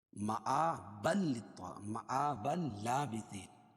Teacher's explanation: تنوین کے بعد ادغام بلا غنہ ہو جائے گا